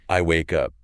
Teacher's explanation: >> You don't change the words, you change the melody, you drop the pitch, and you elongate the stress on the struggle itself, the waking part.